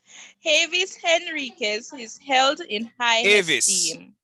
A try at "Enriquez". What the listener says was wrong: No, you're pronouncing an H. There's no H. Enriquez. You're saying Henriquez. Enriquez, right? There's no, that's why it says to correct the H. Addition, in other words, you're not supposed to pronounce the H.